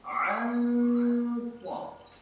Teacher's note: Ada nun sukun bertemu dengan sad, berhukum tajwid ikhfa haqiqi. Sad masuk dalam salah satu huruf ikhfa haqiqi, maka kita samarkan nunnya